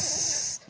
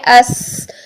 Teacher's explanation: سین اور زا میں باریک سیٹی ہوتی ہے